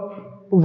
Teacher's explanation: वाह को बोला जाता है दंतोष्ठ। ठीक, ये दंत प्लस ओष्ठ से मिलकर बोला जाता है।